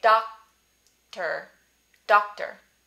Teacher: a word that would use no audible release in the middle of the word